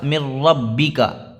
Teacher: نون ساکن کے بعد را آ گیا حروف یرملون میں سے، تو یہاں پہ بھی ادغام را ہو رہا ہے، یہاں پہ بلا غنہ کے ہم ملا کر پڑھیں گے، یہاں کوئی غنہ نہیں ہوگا۔